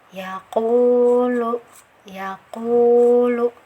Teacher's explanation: menempel pada bagian daging dari langit-langit atau bagian yang mana Jadi pangkal lidah menempel pada bagian langit-langit tapi yang lunaknya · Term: huruf qaf